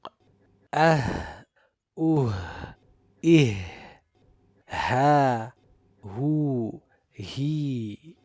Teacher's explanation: Ha being a letter of hams, rahawa and istifal, the sound as well as the breath flows easily, and it is always recited with tarqiq.